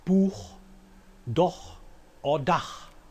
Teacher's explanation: velar fricative ch, which only occurs after back vowels